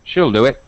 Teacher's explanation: we reduce it to the relaxed short I